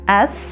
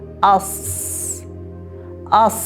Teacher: Demak, ikkalasini ham mahraji til uchi pastki old tishlarning ichki tarafiga tegishi bilan chiqar ekan, faqatgina sin harfida til orqasi ko'tarilmas ekan. Sod harfida esa til orti ko'tarilar ekan.